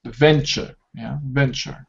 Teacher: two syllables and the stress Falls at the beginning